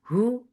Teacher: The sound is short. Hu for dhamma circling lips. The sound is short.